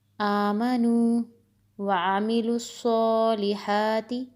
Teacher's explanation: الف کی آواز اور عین کی آواز مختلف ہے، عین حلق سے ادا ہوگا